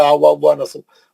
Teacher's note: 3 वाव है, एक वाव पे जबर है, एक वाव पे साकिन है, एक वाव मुशद्दद है। साकिन वाव को हज़्फ कर देना, निकाल देना